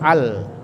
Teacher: Maka lamnya dibaca terang, ya, dibaca terang, dibaca sukun al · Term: izhar kamariyah